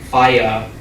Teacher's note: Whereas if I was to say f-a-i-a, that's not going to be as intelligible as if I was to say smoothly fire as sort of a glide across those vowel sounds. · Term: vowel glides